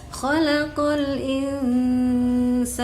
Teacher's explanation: itu lamnya mantul. Harusnya tidak boleh mantul